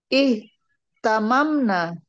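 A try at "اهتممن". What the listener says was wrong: Eh, tamamna. Eh. Ihtalalna, ihtamamna. Gak boleh lebur mimnya.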